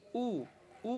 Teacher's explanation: ऊ का जब हम उच्चारण करते हैं तो जीभ जो है देखना पीछे की ओर जाने लगता है। ऊ जब आप बोलोगे तो पीछे की ओर वो जा रहा है, लेकिन इसका ये अर्थ है कि उसका जो पीछे वाला भाग है जीभ का वो ऊपर उठ रहा है। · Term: पश्च स्वर